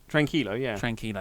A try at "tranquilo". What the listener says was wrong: Yeah, you're actually pronouncing the Q and U. like a bloody Brit.